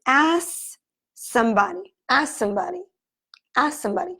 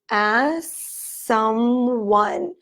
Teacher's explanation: We're going to remove the K from the situation. We're going to connect the two S's. And it's going to say, ask somebody, ask somebody, ask somebody. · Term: speech reductions